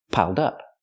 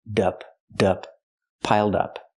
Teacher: Connect the d with the next word. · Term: Link the sounds